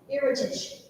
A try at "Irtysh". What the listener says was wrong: Yeah, the next syllable. You added an extra syllable. He said irritation. That's an extra syllable.